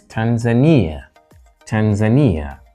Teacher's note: with a stress on the third syllable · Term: secondary stress